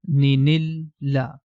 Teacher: we have to express the hidden noon which is inside the tanween · So this part becomes ni, and this ni is going to connect with lam, becomes ni nil la. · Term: Noon Qutni